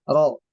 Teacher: rnya di sini dibaca tebal ya karena berharakat fathah